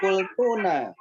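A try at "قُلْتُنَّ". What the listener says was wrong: Kultunna. Nunnya tasdid Ustaz. Kultunna.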